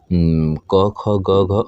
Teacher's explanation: ये जो क वर्ग है, ये कंठ से उच्चारित होता है।